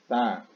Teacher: Ini sa, bukan sya, bukan juga sa, tapi lebih tipis sedikit. Sa di ujung lidah